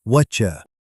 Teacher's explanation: The T at the end of what and the Y at the start of you meet in the middle and create a CH sound.